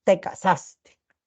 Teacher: el de sarcasmo, que dice que es mixto, que es entre ascendente y descendente, entonces podría ser, te casaste.